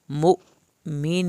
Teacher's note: المؤمن پہ جھٹکا لگے گا حمزہ کے اوپر جزم ہے